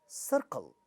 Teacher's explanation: second syllable not stressed because the first one is stressed, ka in the syllable initial position, no aspiration. Therefore, we are saying when the stress is on the first syllable, second syllable is unstressed and unaspirated.